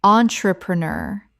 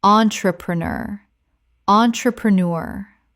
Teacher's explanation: Five syllables with the stress on the final syllable.